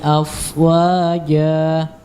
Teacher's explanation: huruf fa dialirkan karena dia memiliki sifat rakhawah dan juga hams